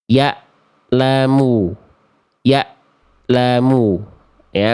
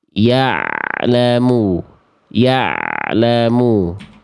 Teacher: kalau ain itu bunyinya mengalir sedikit enggak boleh tertahan dengan huruf berikutnya ya'lamu dari tengah tenggorokan.